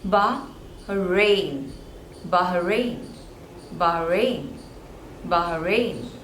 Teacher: again there are two syllables and the stress is on the second one